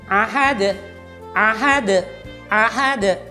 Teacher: Huruf hamzah digantinya menjadi huruf ain.